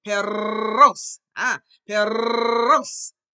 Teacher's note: The tongue is behind your teeth and you roll it.